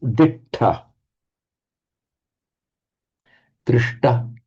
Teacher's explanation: whenever the sh is followed by a ta, or write it in Roman sh followed by a ta, it always becomes retroflex shta in Sanskrit